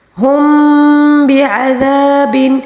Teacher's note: میم ساکن کے بعد اگر با آ جائے تو اس کو ہم نے پورے اخفا کے ساتھ پڑھنا ہوگا